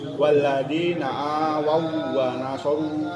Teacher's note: Nanti daripada lupa-lupa ingat atau banyak lupanya, itu setiap waw mati ketemu waw yang bertasdid, bukan dengung atau bukan bacaan yang ditahan. Dia hanya penekanan sekedar tasdid biasa, bukan sampai ditahan lama